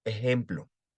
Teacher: la x que es una j y se convierte en una aspiración débil de la h